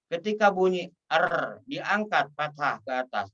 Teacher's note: Huruf ro adalah pekerjaan lidah. Lisan kita atau lidah kita, ujung lidah kita getarkan.